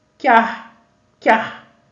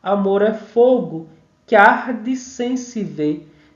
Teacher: eu tenho a palavra que, que termina com uma vogal átona. e arde começa com a vogal átona, então ela se funde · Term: fusão